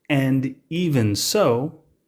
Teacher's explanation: used in the english language and its connected speech pronunciation and very often the d sound drops off and you'll only hear an